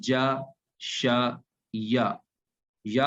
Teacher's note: یہ حروف ادا ہوتے ہیں زبان کے درمیان سے جب اوپر سے تالو کے ساتھ لگتے ہیں